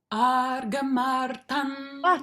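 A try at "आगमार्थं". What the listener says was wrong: You're giving a little, you're adding a little repa in that. So it's not arga, no. Aga, martan, right? Try again.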